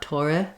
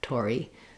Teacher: And finally, make sure that you end on e. Don't let your tense e become too lax, not tore, but tori. So even though the e is fast and unstressed, it still is that tense e vowel.